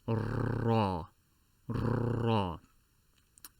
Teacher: if you notice that my tongue is vibrating against my palate multiple times, because a trait of the letter Ra is repetition. I believe in English it is called rolling the R, like in Spanish, if I recall.